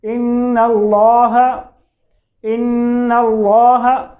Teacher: आपकी जो ज़बान है वो ऊपर तालु पे भी लग रही है और नाक में भी आवाज़ जा रही है। और नाक को खशूम भी कहते हैं, यानी खशूम में भी जो आवाज़ है वो जा रही है, तो खशूम नाक के भांसे को कहते हैं। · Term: नून मुशद्दद